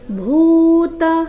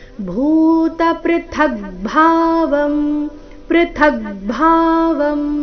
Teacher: ಭೂತ ಭೂ ಮಹಾಪ್ರಾಣ ದೀರ್ಘ